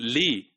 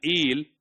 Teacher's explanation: the L in Li is a complete L sound, but L in eel, that is a dark L